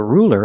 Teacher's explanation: when you said ruler you used a light L because the L is between vowels